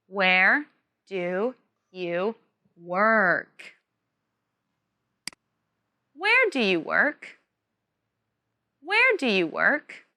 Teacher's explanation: emphasize where and work. Also, this is a WH question, so it has a falling tone at the end.